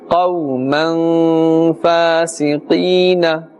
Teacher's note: Qaf and waw, fatha. The waw sakin with the fatha before it, this is a waw lean, and therefore no pulling is required and necessary. Ya sakin with the kasra before it, this is ya mad, and therefore a slight pulling up to the extent of one alif will take place.